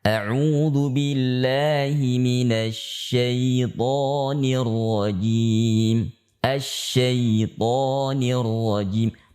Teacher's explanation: ya sukun yang sebelumnya fathah tidak boleh dibaca tebal